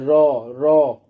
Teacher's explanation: র, র এর উচ্চারণটা দেখো, র এর মধ্যে একটা কম্পন অনুভূত হচ্ছে র এর উচ্চারণ করার সময়, র র, তাহলে এটি কম্পিত ব্যঞ্জন।